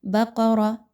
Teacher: بقرہ قاف اور را کو موٹا پڑھا جائے گا